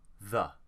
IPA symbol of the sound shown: ə